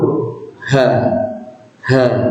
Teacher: pangkal tenggorokan yang paling bawah sama tempatnya dengan Hamzah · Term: huruf ha